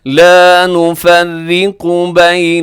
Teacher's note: نفرق میں را باریک ہے، را کے نیچے زیر ہے، باریک رکھیے گا، قاف موٹا رکھیے گا